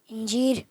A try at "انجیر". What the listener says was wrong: جیر، رے آخر میں یا لام ہے؟ مائک میں رے ادھر دیں آگے.